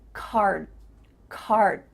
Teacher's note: your mouth is making the shape of that D sound, but it's not making the vibrations happening. You're not actually making a D sound, but your mouth is making that shape.